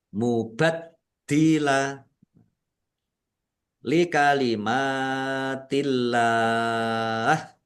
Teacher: Allahnya dibaca tipis karena harakat di depannya kasrah